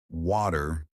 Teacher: One, the T that disappears. Americans love to soften or remove the T sound.